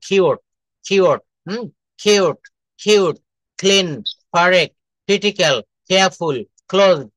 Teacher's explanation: C কে কিউ থাকলে এর উচ্চারণ ক না হয়ে খ এর মতো উচ্চারণ করতে হয়